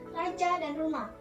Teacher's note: Konsonan getar ialah konsonan yang dihasilkan dengan mendekatkan dan menjauhkan lidah ke alveolus dengan cepat dan berulang-ulang sehingga udara bergetar dengan konsonan yang dihasilkan.